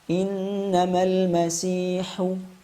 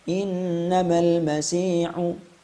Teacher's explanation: sebelum kita mengeluarkan ha dhamah terdapat desis udara sedikit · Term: hams